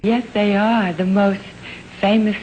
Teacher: listen to the tiny little sort of catch breath right after the word most